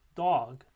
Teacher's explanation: And then we have voice stops, alveolar and velar, in dog. · In the case dog, there's vibration throughout the articulation of the word.